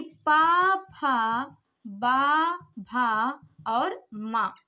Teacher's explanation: पा वर्ग के जितने भी वर्ण हैं वो होष्ठ यानी ओष्ठ से बोले जाते हैं